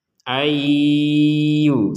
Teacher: Maka kita memasukkan nunnya ini kepada huruf ya sehingga dibaca ayyu. Ayyu seperti itu.